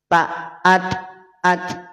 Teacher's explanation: PLTN itu adalah kondisi Posisi di mana pangkal lidah tidak naik pangkal lidah tidak naik sehingga karena pangkal lidah tidak naik bunyi jadi tipis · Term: istifal